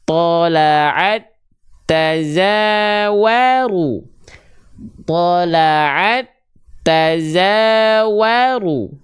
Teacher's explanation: Leburkanlah huruf ta kepada huruf ta bertasydid yang sama makhraj dan sama sifatnya. Jadi kembar identik. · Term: idgham mutamatsilain